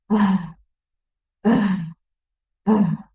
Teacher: ketika mau ngeluarin huruf hamzah kan kayak kerasa kan di sini tuh ketahan gitu. Adanya di pangkal tenggorokan gitu. Misalnya ketika ah, ah, ah, kan kerasa ya di sini gitu di pangkal tenggorokan.